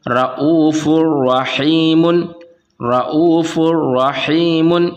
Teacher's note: اسی طرح سے یہاں پر فا ہے اور فا کے اوپر دو پیش کی تنوین ہے، اور تنوین کے بعد اگر را آ جاتا ہے تو یہاں پر ادغام ہوگا، اور کیونکہ را میں بنا گنہ کے پڑھیں گے تو یہاں پڑھیں گے رؤوف الرحیم رؤوف الرحیم۔